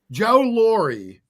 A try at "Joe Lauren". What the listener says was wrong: So it's like my name, but instead of an E, it's an N. Lauren, yeah.